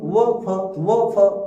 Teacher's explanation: व फ दंतोष्ठ की सहायता से बोला जाता है